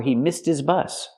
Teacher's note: the H in his is silent because it's not a stressed word